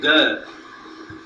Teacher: it is only the back part of the tongue which touches the upper portion